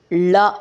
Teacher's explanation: ಳ ಅನ್ನೋದು ನೋಡಿ ನಿಮಗೆ ಬಾಯಿನ ಮುಂಭಾಗದಿಂದಲೇ ನಾವು ಉಚ್ಚಾರಣೆ ಮಾಡೋಕೆ ಸಾಧ್ಯ ಆಗುತ್ತೆ ಳ ಕಾರ ಅಂತಂದ್ರೆ ನಾಲಿಗೆಯನ್ನ ಮೇಲೆ ತಾಕಿಸಬೇಕು ದವಡೆಗೆ